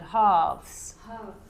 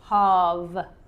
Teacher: It's not an F either. It's a V, so it's softer.